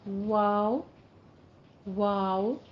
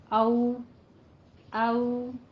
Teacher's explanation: دونوں ہونٹوں کو گول کریں گے ناتمام، یعنی پورا مکمل طور پہ بالکل بند نہیں کرنا ہے، گول کر کے نرمی کے ساتھ دونوں ہونٹوں کو راؤنڈ کریں گے تو واو، واو.